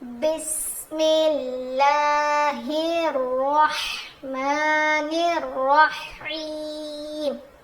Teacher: [संगीत] बिस्मिल्लाहहिर्रहमानिर्रहीम ये र ये र और ये र को मोटा पढ़ेंगे हम लोगर्रहमानिर्रहीम ऐसे र मोटा और ह की आवाज क्लियर आनी चाहिए